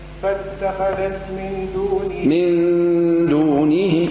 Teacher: إخفاء النون مع الغنة